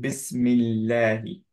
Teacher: heavy পড়বো যদি তার সামনে কাসরা থাকে হালকা পড়বো ফর এক্সাম্পল বিসমিল্লাহি এখানে লা পড়বো হালকা কারণ হচ্ছে কি সামনে মি আছে